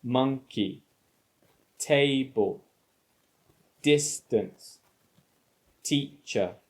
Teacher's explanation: they are two syllable nouns and the main stress is on the first syllable so we don't say monkey we put stress on the first